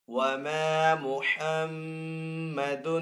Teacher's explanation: یہاں پہ میم کے اوپر تشدید کا سائن، تو یہاں پہ میم مشدد ہے، میم مشدد کے اوپر یہاں پہ غنہ کر کے پڑھیں گے